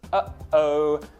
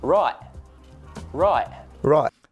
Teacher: It's called a glottal stop, and it's very common in Australia. The way you want to make your glottal stop, if you don't know how to do it, is to start with the phrase, uh-oh.